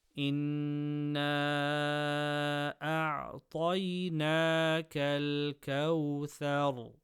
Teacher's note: ra sakina after fatha, full mouth